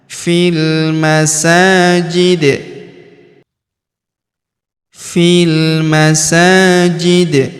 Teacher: Huruf sa kita panjangkan dua harakat karena terdapat alif kecil. di atasnya fil masajid.